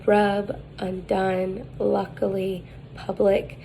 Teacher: The height is low, mid, the advancement is back, central, the lips are unrounded, and it is lax. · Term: wedge, turned V wedge